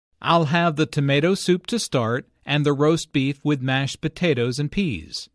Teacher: tomato soup roast beef and mashed potatoes are compound words the stress falls on the second word in each phrase